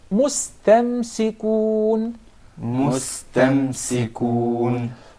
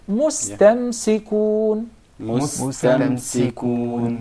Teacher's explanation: Of course, we don't have any problem whatsoever with pronouncing the sin properly because it's followed by a letter that's already muraqqaq, so it will not be confused with the sad. It will be easier to say it as sin.